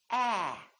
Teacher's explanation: so your lips are open and your tongue is down and your tongue is tense